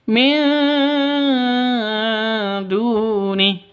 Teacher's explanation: Nun mati bertemu dengan dal. Samar didengungkan, siap-siap ke huruf dalnya karena ikhfa hakiki.